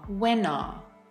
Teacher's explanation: linking takes place between when and are when are. And then that r sound links right into the you in American English. · The linking takes place between when and are.